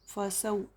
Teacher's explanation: वाव साकिन से पहले ज़बर वाव लीन नरम आवाज़ के साथ जल्दी अदा करेंगे।